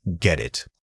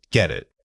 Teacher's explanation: The key here is that we don't pause between the two words. The final from get immediately blends into the vowel of it.